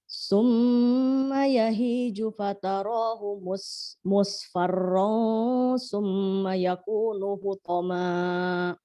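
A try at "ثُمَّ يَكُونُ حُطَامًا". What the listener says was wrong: Hutonya panjangkan, fokus.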